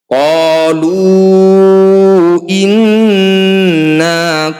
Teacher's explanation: Cara bacanya bunyi nun kita tahan atau kita dengungkan 2 harokat. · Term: gunnah musyaddadah